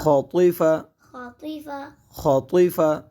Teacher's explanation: ہم نے خا اور طا دونوں حروف کو پر کیا کیونکہ خا اور طا حروف مستعلیہ میں سے ہے